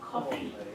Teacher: The E needs to be brighter.